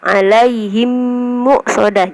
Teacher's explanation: untuk membaca mim sukunnya itu harus dimasukkan atau digabungkan dengan mim yang sesudahnya, alaihim muqsadah, jadi digabungkan ya. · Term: idgham mimi